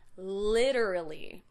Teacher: We make that T into a D. That's very typical of American English.